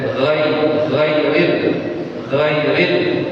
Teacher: Ketika kita ngomong gha kan dari langit-langit tuh keluarnya g.